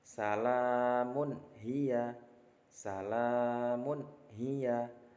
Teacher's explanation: Ada tanwin bertemu dengan ha, maka tanwinnya harus dibaca dengan jelas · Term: izhar